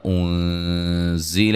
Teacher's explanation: زا کو سیٹی سے ادا کریں گے